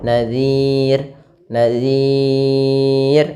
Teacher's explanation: Di sini kita boleh memanjangkan dua harakat, boleh empat harakat, dan boleh pula enam harakat. Maka boleh nadir nadir untuk yang empat harakat atau enam harakat nadir. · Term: sukun arid